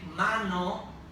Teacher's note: because I have an M and an N, and I have in the middle a vowel sound, the A becomes nasal